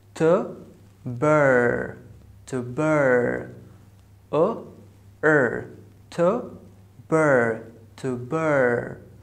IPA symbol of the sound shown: ɜr